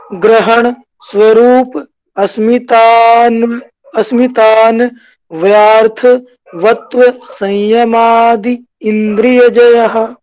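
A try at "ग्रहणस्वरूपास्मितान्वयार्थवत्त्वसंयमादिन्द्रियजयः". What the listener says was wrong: वेरी good, ऐसे ही बोलना है बिल्कुल।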